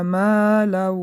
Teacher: الذي مد طبیعی به مقدار 2 حرکت کشیده می شود. جمع مالا ما مد طبیعی به مقدار 2 حرکت کشیده می شود